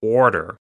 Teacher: You see some dialects in America where they'll say like water, and you see R coming in where there wasn't an R before, Adding an R.